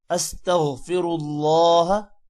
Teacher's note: اللہ کے نام کو موٹا کرنا ہے